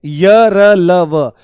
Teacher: यह बिल्कुल स्वरों स्वरों वाला है। सघोष हैं और सारे के सारे अल्पप्राण हैं। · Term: अंतस्थ व्यंजन